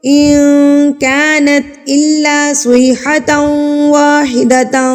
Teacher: نون ساکن اور تنوین کی آواز پر اقفا کریں گے، یعنی کہ ان کو چھپا لیں گے ناک میں، اقفا کو کہتے ہیں چھپانا، اس کا مطلب ہی چھپانا۔